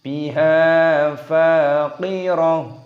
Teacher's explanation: fa-nya dibaca panjang, ada tanda alifnya mutabi'i, panjangkan dua ketukan. Biha faqirah, bukan faqiratun ataupun faqirat, tapi faqirah.